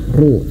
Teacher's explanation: Ketika fathah, ketika kasrah tidak boleh manyun, tapi ketika dhammah manyun ru.